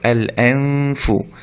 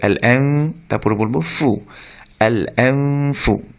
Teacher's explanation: নুন সাকিনকে গুন্না সহকারে অর্থাৎ নাকে সাউন্ড করে নেজাল সাউন্ড সহ গোপন করে পড়তে হয়, অর্থাৎ আমরা স্পষ্ট করে এল এন এন নুনকে স্পষ্ট করবো না, আমরা একটু গুন্না করে পড়বো এল এন ফু এল এন এন মানে এন না পড়ে আমরা এন একটু গোপন করে পড়বো এল এন ফু।